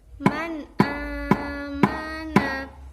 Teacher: Contoh bacaan idhar halqi antara lain yang pertama hamzah, yaitu man amana. Pada contoh yang pertama ada nun mati bertemu dengan huruf hamzah yang merupakan huruf halqi, jadi dibaca jelas dengan satu ketukan.